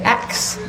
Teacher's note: when we moved down south, we heard people say ax a question, so the S and K were flipped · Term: metathesis